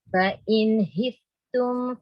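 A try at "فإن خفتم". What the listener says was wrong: kha tu fa in khiftum.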